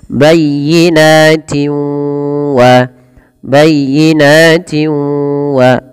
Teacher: Tapi kalau kita lanjutkan bayyinatin wa ma yakfuru biha, masukkan tanwin yang di sini pada lafal tin ketemu waw karena dia ada bacaan idgham bi gunnah. Yaitu cara membacanya memasukkan suara tanwinnya kepada huruf waw.